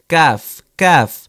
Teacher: জিহ্বার গোড়া থেকে একটু আগে বাড়িয়ে, তার বরাবর উপরের তালুর সঙ্গে লাগিয়ে উচ্চারিত হয় কাফ, উচ্চারিত হয় কাফ, কাফ।